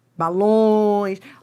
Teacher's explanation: Se você vai da vogal para semivogal, é um ditongo decrescente, né? Você vai do forte para o fraco e nasal, porque é nasalizado.